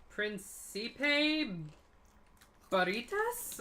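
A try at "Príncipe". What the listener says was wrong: got to roll your R's.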